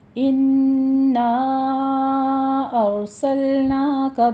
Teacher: نا پہ مد منفصل جائز، 4 کاؤنٹ کرنا ہے ، ارسلناک، را مفخم پڑھی جائے گی، سل پہ قلقلہ نہیں